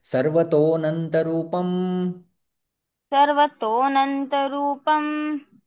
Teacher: तो जब हम श्लोक का उच्चारण करते हैं तो ऐसा अवग्रह आ जाता है, तो आपको समझ लेना चाहिए कि इसके अंदर जो है वो अ छिपा रहता है, तो अनंत रूपम। लेकिन जब हम श्लोक का उच्चारण करते हैं तो वो अ का उच्चारण साइलेंट हो जाता है, इसलिए ये अवग्रह होता है।